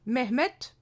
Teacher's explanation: cette règle phonétique de l'assourdissement des finales qui s'appliquent et qui explique un nom comme Mehmet avec la terminaison du T au lieu du D · Il s'agit de l'assourdissement des consonnes dites sonores en fin de mot, et cela en vertu d'un principe d'économie.